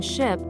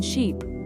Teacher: in English we have different vowel sounds like the short I in ship and the long e in sheep